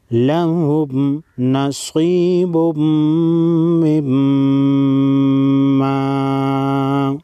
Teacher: تنوین کے بعد حروف ارملون میں سے میم ہے. میم مشدد کو بھی غنہ کریں گے. ادغام بھی ہوگا، غنہ بھی ہوگا اور میم مشدد پر بھی غنہ ہوگا.